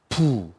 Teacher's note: 부 이럴 때 손등의 바람이 푹하고 나갑니다